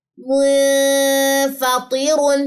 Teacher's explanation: اخفا باریک ہو گیا کیونکہ فا باریک لیٹر میں سے ہے